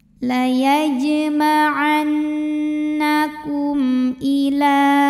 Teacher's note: Berikutnya ada hukum izhar syafawi. Karena mim sukun menghadapi huruf yang bukan mim bukan juga ba, maka mimnya dibaca jelas.